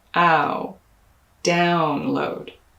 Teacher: In upload, you're going to stress the first syllable, which is an vowel, the same as in my pronunciation of the word stuff. In download, you'll also stress the first syllable, but it'll be that ow diphthong. Notice how the corners of my lip move.